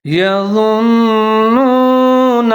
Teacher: الذین یظنون، یا کے اوپر زبر ہے، ضوا کے اوپر پیش ہے، نون مشدد ہے، ضوا اور نون دونوں ملا کے پڑھیں گے۔ آواز کو 3 سے 4 سیکنڈ تک ناک میں لے جائیں گے، غنہ کریں گے، لیکن آگے نون کو پھر واو کے ساتھ ملائیں گے کیونکہ واو کے اوپر ساکن ہے تو یہاں نون کو واو کے ساتھ ملا کے پڑھیں گے، ہونٹ گول کریں گے۔